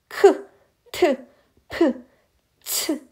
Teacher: 그때 격자는 아주 거칠다, 거세다 이런 뜻을 가진 건데 성대 안에 통로를 넓게 열어 많은 양의 공기를 내보내면서 소리내는 자음으로 아주 크고 거친 느낌을 주는 소리입니다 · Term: 거센 소리